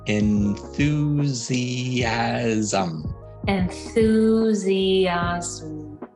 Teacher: we have two vowels next to each other and then we really do say each one distinctly instead of combining them into one one sound so put it all together one more time the